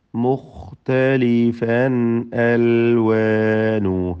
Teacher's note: മുഖ്തലിഫൻ തൻവീനിനെ ഇൽഹാർ ഹൽഖി നൽകി മണിക്കാതെ വെളിവാക്കേണ്ടതാണ്. അതിൽ ഖാഇന് തഫ്ഖീമാണ്.